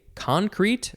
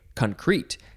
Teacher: you can say concrete, emphasize the first syllable